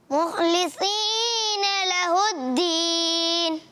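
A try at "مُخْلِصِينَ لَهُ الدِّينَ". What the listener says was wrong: एक मरतबा फिर पढ़े, खा को ऊपर करना, सौद को भी, सौद क्लियर रहे। अच्छा, आप जो है वो सा के मखरे से सौद पढ़ने की कोशिश करते हैं।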